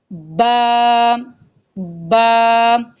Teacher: با کا مخرج ہے دونوں ہونٹوں کے آپس میں ملنے سے